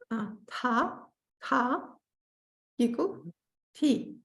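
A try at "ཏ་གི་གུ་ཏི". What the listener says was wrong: Don't lengthen the second column too much though, or it's going to sound like the third column. So just say ta, ta. Ta giku ti.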